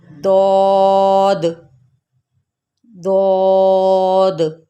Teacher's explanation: دیکھیں زبان کی کروٹ اور اوپر والی داڑھوں کی جڑ سے ادا ہوتا ہے